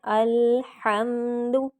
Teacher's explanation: اس میں ہم نے ہا کو حلق سے نکالنا ہے